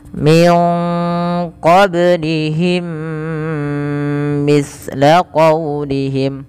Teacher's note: Kemudian mim mati bertemu mim, ini wajib ditahan suara ya, karena dia ada bacaan idgham bi guna, adanya mim mati bertemu dengan mim, dihukumi dengan idgham mim. Cara membacanya masukkan mim pertama kedua dan ditahan suara mimnya.